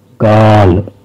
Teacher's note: మొదటి ఆ గుర్తుని చిన్నగా ఆ అని పలకాలి. అండ్ రెండవ ఆ గుర్తును కొంచెం పెద్దగా కాస్త దీర్ఘంగా ఆ అని పలకాలి